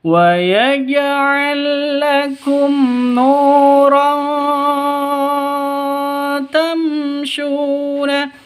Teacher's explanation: tanwin bertemu dengan ta samar didengungkan siap-siap ke huruf tnya karena ikhfa Hakiki · mim mati bertemu dengan shin jelas terang karena izhar safawi tidak boleh dengung.